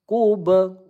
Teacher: kub ba sukun qalqalah sugro memantul ya.